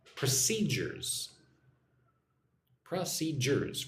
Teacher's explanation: 3 syllables. Put the emphasis or the stress on the second syllable.